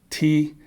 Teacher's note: the tip of my tongue touches the back of my upper teeth t or even my alveolar Ridge um and my velum closes · my upper teeth t or even my alveolar Ridge um and my velum closes the Airways going out my nose so it's not a nasal it's just an oral sound · a t um in my variety of English is a dental right the tip of my tongue touches the back of my